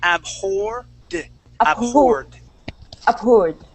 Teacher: we want to go straight to a D sound and say abhorred.